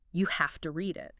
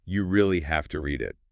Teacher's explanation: It notes that the speaker emphasizes have to.